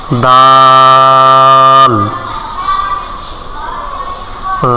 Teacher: জিহ্বার আগা সামনের উপরের দাঁতের গোড়ার সঙ্গে লাগাইয়া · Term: দালের মাখরাজ